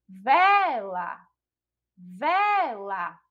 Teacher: A gente já identifica que a sílaba tônica é a sílaba vé, que não é a última sílaba, então também não é a oxítona.